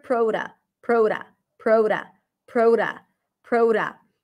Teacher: says pro and then a schwa sound, and you're absolutely right. It's prota. And yes, we have a flap T here.